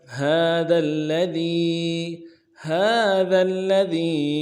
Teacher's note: ذال کو آگے لام کے ساتھ ملانا ہے، لام کے اوپر تشدید زور دیں گے، ذال کو باریک کریں گے